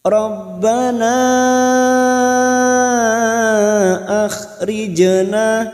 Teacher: jim sukun qalqalah sugroh yang mati asli di tengah kalimat, jangan lupa dipantulkan